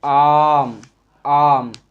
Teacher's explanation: आ को बोलने में मुख जो हमारा पूरा खुल जा रहा है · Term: दीर्घ आ